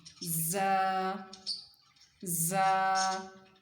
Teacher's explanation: جیسے شہد کی مکھی اڑ رہی ہوتی ہے تو اس کی آواز آتی ہے نا، یہ اس سے آپ نے یاد رکھنا ہے کہ زا کی آواز بھی اسی طرح کی ہوگی، تھوڑی سی شدت والی اور تھوڑی سی بزنگ ساؤنڈ ہوگی اس کی